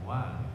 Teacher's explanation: kalau wa ini bibir kita tidak bersentuhan terbuka, wa. Kemudian fa ini posisi gigi diletakkan di bibir yang bawah, fa, kemudian ma, ba.